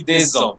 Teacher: The S is silent, but once there is a vowel after it, that silent S will be connected to the next vowel. And it will be pronounced like a Z.